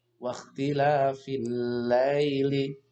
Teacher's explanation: alif lam ini tidak terbaca meskipun ada tulisannya ini masuk ke dalam alif lam syamsiah wanna hari wanna hari